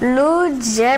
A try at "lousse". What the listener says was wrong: Non, regarde mieux. Non, voilà, tu commets l'erreur comme enfant, c'est lousse, toutes les lettres se prononcent.